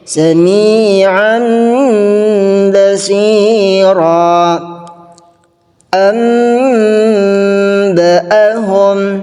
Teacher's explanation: mengganti nun sukun dengan mim sukun dan disertai gunnah 2 sampai 3 harakat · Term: iqlab